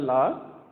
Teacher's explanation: மேற்பல்லின் அடியை தொடுவதால் இந்த லா பிறக்குது